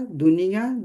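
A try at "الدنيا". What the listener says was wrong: अद्दुनिया, अद्दुनिया, क्योंकि अरबी का हम पढ़ेंगे, अरे उर्दू का नहीं, दुनिया नहीं पढ़ेंगे।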